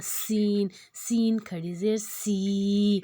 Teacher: اب سین جو ہے سیٹی والا حروف ہے، اس میں سیٹی سے کریں گے